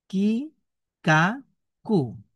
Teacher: কাফ অক্ষরটা জিহ্বার গোড়া থেকে উপরে তালুর সাথে লাগিয়ে পড়তে হয়।